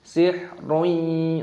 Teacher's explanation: dhammah tanwin bertemu dengan ya, dibaca idgham bi gunnah.